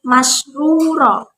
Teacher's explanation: ru-nya dibaca tebal, ro tafkhim